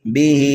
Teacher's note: ہا کے نیچے کھڑا زیر ہے، اس لیے ہا کو ہم ایک الف کے برابر کھینچ کر کے پڑھیں گے